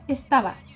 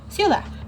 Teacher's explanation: Al hablar en la cotidianidad, tendemos a elidir la s y la d. En palabras como estabas, decimos estaba. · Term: elisión